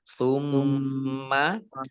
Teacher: Summa mim tasdid dibaca gunnah atau dibaca mendengung. Ya, ditahan 2 harokat.